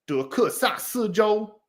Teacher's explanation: du was second tone, ku was fourth tone, sa was fourth tone, si first tone, zhou first tone